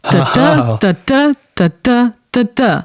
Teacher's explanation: you first have an unstressed syllable and then a stressed one.